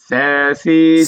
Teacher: সা বলতেছে যে জিহ্বার আগাটা দাঁতের আগের সাথে লাগবে।